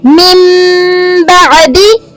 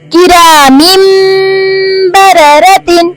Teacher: نون ساکن کے بعد با ہے تو اس کو میم میں بدل لیں گے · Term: اقلاب